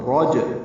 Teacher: را پر پڑھیں گے، جیم سے ملائیں گے، جیم ساکن پہ قلقلہ ہوگا. راج را پر ہے اور قلقلہ ہے جیم پہ.